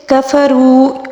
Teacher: کفروا اور رو یہاں پر جو ہے واو مدہ ہے، اس کو بھی 1 الف کے برابر کھینچ کر پڑھیں گے